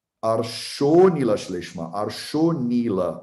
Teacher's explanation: Então, o A vira um Avagraha. Ele não é pronunciado.